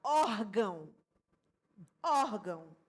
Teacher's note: É uma palavra que a sílaba tônica, né, é a penúltima sílaba